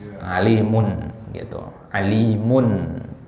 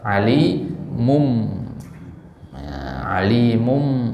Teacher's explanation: jadi bunyi n pada tanwin itu berubah menjadi bunyi m.